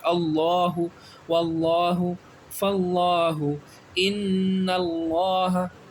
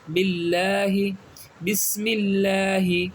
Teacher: لفظ اللہ سے پہلے زبر آ جائے تو یہ کیا پڑھیں گے، اس کو پر پڑھیں گے، یعنی منہ گول کریں گے۔